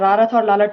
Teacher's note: अल्प प्राण सघोष ध्वनियां है